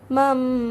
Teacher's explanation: Okey, dan cara bacaannya adalah dengan cara menukar ataupun mengubah nun mati menjadi bunyi huruf mim mati dan didengungkan sepanjang 2 harakat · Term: iqlab